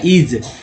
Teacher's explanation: तो एस यहाँ ज के रूप में पढ़ा गया है।